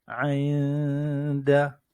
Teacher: nun sakinah ni kita tak dengar, kita tak bunyikan nun dia, tetapi kita dengungkan, iaitu ng kat belakang dia dengan berbunyi ainda.